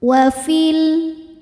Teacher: fi-nya ini dibaca pendek karena ada proses namanya takhallus bil hadfi. Takhallus bil hadfi terjadi karena ada pertemuan 2 sukun.